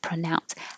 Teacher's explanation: The PRO is changing to pr because it's not stressed.